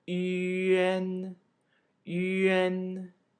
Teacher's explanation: The same thing is true for ü, a, and n. Ü is pronounced with the tongue forward, a with the tongue back, and n with the tongue forward. Just like yen, the a is pronounced as e.